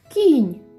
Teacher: Слово починається з м'якого приголосного звуку